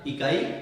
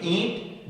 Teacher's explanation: जब आप ईंट बोलेंगे दोस्तों तो आप पाएंगे कि वायु का प्रमुख अंश मुंह के साथ साथ नाक से बाहर निकल रहा है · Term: अनुनासिक